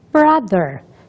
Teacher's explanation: não é pronunciado com aquele som da língua entre os lábios